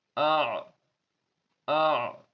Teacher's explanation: بیچ حلق سے عین نکلتا ہے، تو دونوں کا مخرج الگ الگ ہے، دونوں کے نکلنے کی جگہ الگ الگ ہے.